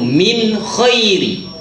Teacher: Izhar halki. Tak payah dengung. Sebab huruf halkum mana boleh dengung.